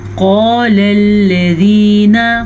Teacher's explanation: قاف کو پور پڑھیں گے، قاف ہمیشہ ہی پور پڑھا جاتا ہے